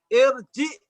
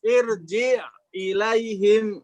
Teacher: jadi ain dengan hamzah seolah-olah terputus. Karena kalau hamzahnya kasroh, ya berharokat, dia memutus dengan sebelumnya.